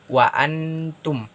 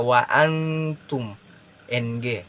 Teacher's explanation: lebih mengarah kepada ng karena disitu ada nun sukun yang bertemu dengan huruf ta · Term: ikhfa